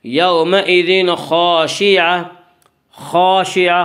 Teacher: خا کو پر پڑھیں گے۔ خا حروف مستعلیہ میں سے ہے۔ حروف مستعلیہ 7 ہیں جن کا مجموعہ خصہ ضغط تنقیزہ جو ہمیشہ ہر حال میں پر پڑے جاتے ہیں۔